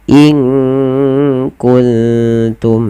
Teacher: kita lafalkan dengan bacaan ikhfa yaitu menyamarkan suara nunnya kepada huruf kaf.